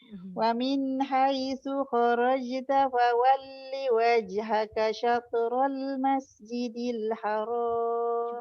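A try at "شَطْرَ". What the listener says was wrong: Cuba tebal sikit ta dia. Syatra, jangan syatrul.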